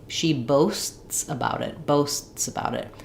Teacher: the t is not aspirated it's not really audible